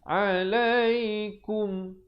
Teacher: izhar syafawi, bunyi kum, jangan panjang